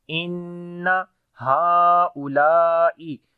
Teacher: On the noon we make shadda. On the noon there is shad sign, we make gunna.